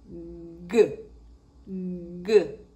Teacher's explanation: Eu levanto o dorso da língua e baixo a ponta. E aí a gente tem uma vibração aqui embaixo das pregas vocais. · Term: sonora